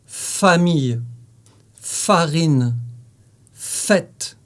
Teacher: c'est un son soufflé pour le faire place à lèvre inférieure contre les dents supérieures et souffle